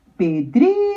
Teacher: Pedrinho é o dri, a sílaba mais comprida. Então, por isso que está marcada aqui como sílaba tônica.